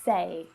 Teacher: this sound is made with the e and the I vowel sounds pushed together. So it's e as in egg and the I as in sheep vowel sounds.